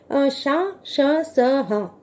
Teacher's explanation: ష, ష, స, హ, ష, ష, స, హ అనేవి సంఘర్షి వర్ణములు. వీటిని ఉచ్చరించే సమయంలో గాలి 2 ఉచ్చారణ స్థానముల మధ్యలో సంఘర్షించి బయటికి వెళుతుంది